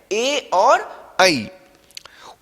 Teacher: उसका उच्चारण स्थान कंठ तालु हो जाता है